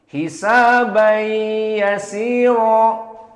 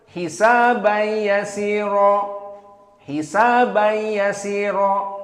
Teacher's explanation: jumhur membaca dengan 2 harokat idgham bi gunnah